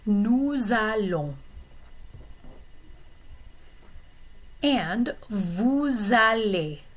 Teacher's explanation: when you pronounce it before a verb beginning with a vowel sound, then you are going to pronounce the S.